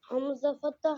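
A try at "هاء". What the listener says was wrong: Ha. That's Hamza. No, that's ha. Ha fatha ha.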